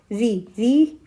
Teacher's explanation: ऋ ऋ का जो उच्चारण स्थान है वो क्या है? मूर्धा।